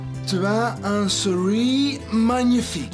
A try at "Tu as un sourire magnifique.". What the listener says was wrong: Non, non, non. Sourire, pas souris. Sourire. Tu as un sourire magnifique.